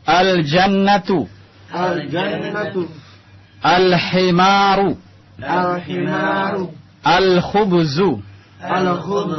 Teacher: Antum lihat di sini alif lamnya jelas terlihat. Lamnya tidak masuk ke dalam huruf setelahnya, tapi dibaca jelas. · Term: al-huruf Al-Qamariyah